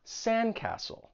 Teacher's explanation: notice that T is also gone in castle because it comes between two consonants. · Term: elision